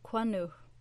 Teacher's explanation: For example, quanuh, see it, is composed of quan and the suffix nuh. The two N sounds are often pronounced as one N, so the word can also be spelt quanuh.